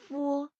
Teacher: ফুয়ো, দুটো ঠোঁট একসাথে হুম, লেগে ফু বাতাস বের হচ্ছে। আর এফ এর মধ্যে হচ্ছে দুটো ঠোঁট একসাথে লাগা দরকার হয় না। আমরা ফ যেভাবে বলি সেভাবে ফ এর মতো বলবো, পুরো মুখটা খোলা রেখে বের হবে।